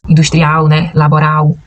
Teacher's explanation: Então a gente não vai falar industrial porque o L não vai ter som de u como no português